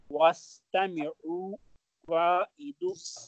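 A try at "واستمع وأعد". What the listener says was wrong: Wastami. There's a skun on ayn. Wa'id. There's a skun on dal. No dhamma.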